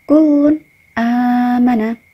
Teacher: Dibaca idhar atau jelas karena ada tanwin bertemu dengan hamzah.